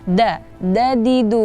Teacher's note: da itu ada di ujung lidah bertemu dengan gigi seri atas